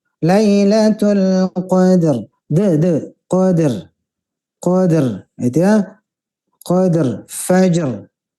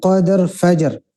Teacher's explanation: dalnya masih berat karena qalqalah ini harus mengalir